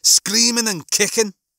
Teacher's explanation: It's a very good line with a Scouse accent. You get a lot of the kh. And that's an interesting part of the Scouse accent, is the way that hard consonants like C's and K's work.